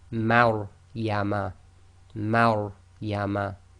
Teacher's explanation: the Ma is light and the Ra is tafkheem, full mouth. So you've got to switch from empty mouth to full mouth very quickly.